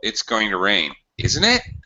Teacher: I use final rising intonation to show that I am not sure of what I'm talking about. I don't know what I'm talking about.